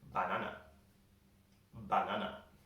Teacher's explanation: in spanish they would say banana banana they pronounce every single a in the word ba na but we don't do this in english we are